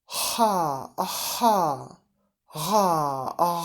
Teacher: Spółgłoski uvularne, języczkowe, uvular, na styku języka i końcówki podniebienia, czyli języczka.